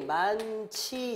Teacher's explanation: 요거는 발음이 많지 이렇게 나잖아요. 그럼 요거는 여기 히읗이 지읒하고 이렇게 붙어가지고 치읓으로 가는 거니까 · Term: 자음 축약